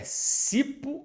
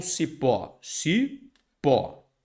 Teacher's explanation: sílaba tônica é a última nós temos aqui uma oxítona